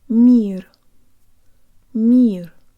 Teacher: There's almost a Y sound built into the M.